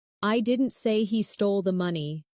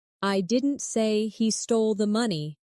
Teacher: the stress is on I, meaning maybe someone else said it.